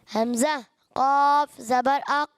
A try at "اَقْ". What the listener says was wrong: اق قلقلہ مزے کا نہیں آ رہا.